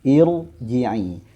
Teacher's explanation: sekalipun nanti hamzah wasolnya itu dibaca kasroh ya, maka dia wajib dibaca tebal ya